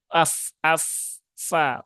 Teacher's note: tidak seperti bunyi P ya Bukan pala tetapi Fa ya Ee ujung dua gigi seri ee atas bertemu dengan bibir bawah